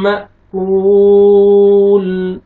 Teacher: م، حمزہ کو آپ نے جھٹکے سے پڑھنا ہے، حمزہ کو مرسکون ہے. م، واو مد ہے، واو ساکن سے پہلے ضمہ، کاف کو آپ نے کھینچنا ہے